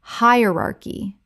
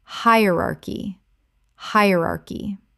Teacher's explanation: Four syllables with the stress on the first. The c h makes a k sound.